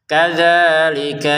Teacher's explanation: Kadzalika dzalnya panjang 2 harokat, kafnya pendek ya, jangan kadzalika yubayyina.